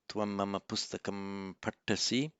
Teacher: the anuswara M followed by a P, so it would be pronounced as an M, near the same point of articulation as the following P. So, tvam mama pustakam partasi, the only change you would make would be in the writing, the spelling, the pronunciation would remain unchanged.